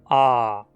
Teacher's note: Vogal aberta posterior não arredondada. A língua fica o mais para trás e para baixo possível.